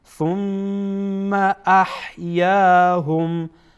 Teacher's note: ثم در اینجا مشدد غنه میشه